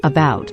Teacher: the second part of the word about is stressed but not where the a is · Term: schwa